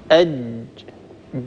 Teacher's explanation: لما نطقت الجيم الساكنة حصل قرع، حصل تلامس بين طرفي عضو النطق · فننتبه لهذا، لابد أن نحرص على صفة الشدة في حرف الجيم، الجيم الفصيحة الصحيحة المنقولة إلينا عن رسول الله صلى الله عليه وآله وسلم والعرب المعاصرين له، هكذا هي جيم شديدة ينحبس فيها الصوت.